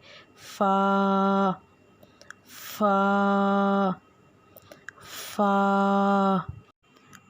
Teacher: اوپر کے دانتوں کے کنارے اور نچلے ہونٹوں کے تر حصے سے ادا ہوتا ہے